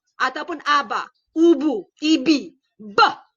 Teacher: bunyinya ialah plosif bilabial bersuara. Hentian dua bibir bersuara. Ataupun kita sebut letupan dua bibir bersuara.